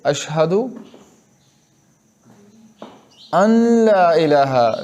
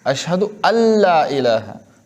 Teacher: नून मुकम्मल ख़त्म हो जाएगा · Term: इदगाम बिला गुन्ना